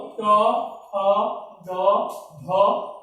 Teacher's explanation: এই ধ্বনিগুলো উচ্চারণ স্থান হলো মূর্ধা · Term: মূর্ধন্য ধ্বনি